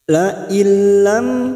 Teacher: La illam mim sukun bertemu ta, idhar safawi, mim sukun dibaca jelas tanpa mendengung